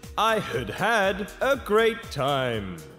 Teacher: is pronounced as an auxiliary verb it takes its weak form if the main verb is also had we pronounce the first one weak and the second one strong